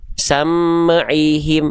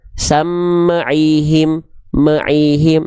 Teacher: mim sukun yang dibaca dengan memantulkan suara